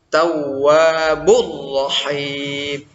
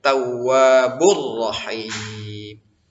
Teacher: Jadi sekedar bertasydid aja, tidak boleh misalnya kita dengungkan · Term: idgham bila gunnah